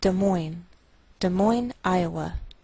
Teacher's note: we treat the name of this capital like one word, and the greater stress is on the second part